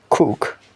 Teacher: The Velar Stop in the word cook. The phonetic alphabet k, it is a Velar stop.